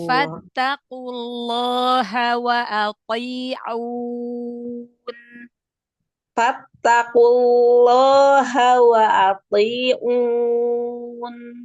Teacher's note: mad arid di sukunnya jangan masuk ke hidung · To-nya tebalkan. Lafzul jalalanya tebalkan. Jangan dinaber.